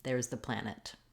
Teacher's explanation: we may end on it and say a true aspirated t